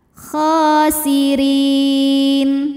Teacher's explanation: huruf ro dibunyikan secara tarqik sebab berbaris kasrah maka dibacanya tipis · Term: tarqiq